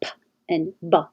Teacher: they're both made in the same place, the lips touch, P and B. The difference is voicing.